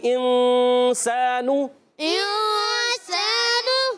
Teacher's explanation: اور انسانوں میں نون ساکن کے بعد سین حروف اخفا میں سے اخفا کریں گے، غنہ کریں گے. نون کو چھپائیں گے بھی ایک، اور ایک الف کا غنہ بھی کریں گے. آواز آئے گی انسانو.